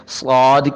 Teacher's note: साद की सीटी वाली और मोटी आवाज है